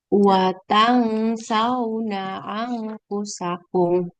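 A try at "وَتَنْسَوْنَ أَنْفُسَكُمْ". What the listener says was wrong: Ya, harusnya dibaca dengung ya. Watasau. Dan ditahan dulu Bunda. Jadi jangan cepat-cepat langsung watasawna, tapi watasawna anfusakum. Jadi harusnya dibaca dengung. Jangan bacanya watan sauna. Nggak, nanti kita belajar dia ada hukum ikhfa di bagian sini itu. Ya, nun sukun ketemu sin jadinya ikhfa dibacanya dengung.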